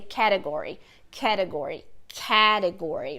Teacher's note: mas o acento, o stress, na verdade é no ca em inglês